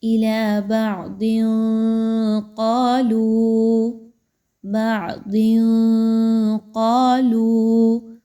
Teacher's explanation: تو یہاں پر قاف ہے، قاف حروف اخفا میں سے ایک ہے، جو ہم نے 15 حروف سیکھے ان میں سے ایک ہے، تو یہاں پر تنوین کی آواز کو مخفی کیا جائے گا، یعنی چھپایا جائے گا ناک میں۔